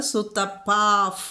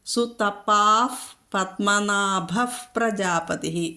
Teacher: അപ്പോൾ പത്മനാഭ പാ വന്നാൽ എന്ത് വേണം? വിസർഗം കഴിഞ്ഞിട്ട് പാ വന്നാൽ ഫ് ചൊല്ലണം.